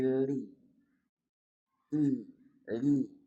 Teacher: li dari dua sisi lidah hingga ke akhir ujungnya bertemu dengan gusi atas di hadapannya